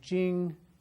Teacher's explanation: And then finally, Jing is first tone, straight across.